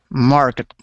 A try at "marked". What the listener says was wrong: So you're still pronouncing that E, saying market. We say marked. Marked. Marked.